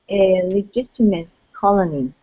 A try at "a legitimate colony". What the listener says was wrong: Okay, so what we're going to do with that T, we're going to switch the T to a flap T sound. Legitimate. Legitimate. Use a D sound instead of a T. Legitimate.